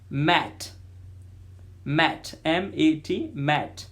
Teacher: it is a nasal sound, means air passes through both mouth and nose, m, while pronouncing m.